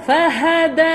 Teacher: Makhraj untuk huruf dal, hujung lidah belakang gigi atas.